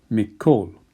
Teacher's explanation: In this next example, you have a Daghesh which is both a weak and a strong Daghesh at the same time. If we take the two words min and kol, as with min sha'ul, which became mish sha'ul, min and kol, if you put them together, you lose the nun.